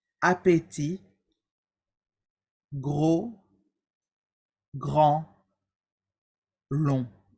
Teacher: les consonnes finales ne se prononcent pas elles sont muettes